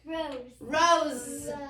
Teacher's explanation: S can make the Z sound usually in the final position, usually at the end of a word